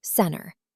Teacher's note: When a T comes after an N, we just pretend it doesn't exist.